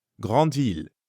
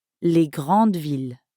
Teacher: in French, this S is usually silent. So big city and big cities sound the same.